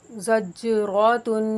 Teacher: تا کے اوپر حرکت تنوین ہے، اس کو غنہ کر کے پڑھیں گے اور وقف کی صورت میں گول تا ہا ساکنہ سے بدل جائے گی، ٹھیک ہے۔